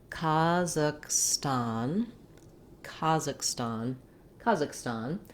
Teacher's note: This H sound doesn't make a sound in American English. · I marked it here with some secondary stress on the stan syllable because it does have that clear vowel. So practicing slowly, Kazakhstan, Kazakhstan, Kazakhstan.